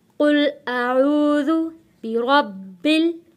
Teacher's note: बिरब्बिल बा के ऊपर हम रुकेंगे, सख्ती के साथ बा को अदा करेंगे क्योंकि तशदीद वाले हर्फ को हम सख्ती के साथ थोड़ा रुक कर अदा करते हैं।